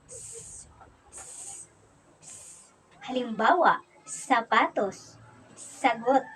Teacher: Ang S ay napabilang sa pagilid at pasutsot. Ito ay walang tinig at binibigkas ito na S, S, S.